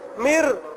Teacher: یہ نون پڑھیں گے نہیں, اور میم کو ہم اس را کے ساتھ ملائیں گے